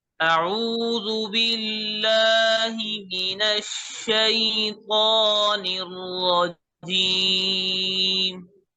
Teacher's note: शीन पर तशदीद है, थोड़ी देर के लिए इसमें जमाव पैदा करें.